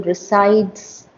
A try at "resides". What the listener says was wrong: it's a zed the S is actually pronounced as a zed